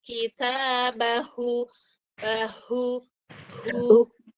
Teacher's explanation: sekarang dorongan H dari pangkal tenggorokan